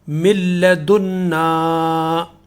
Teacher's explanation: یہ من لدنا، من لدنا، لیکن لام کے اوپر تشدید آنے کی وجہ سے، لام مشدد ہونے کی وجہ سے جو نون ہے اس کی آواز ختم ہو جائے گی اور میم براہ راست لام میں مل جائے گا۔ من کے بجائے مل پڑھیں گے اس کو